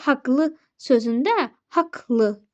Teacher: Bu k olur burada. Q-nın biri düşür, biri də k kimi olmuş olacaq.